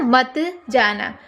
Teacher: मत जाना के बीच थोड़ा विराम है ना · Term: संगम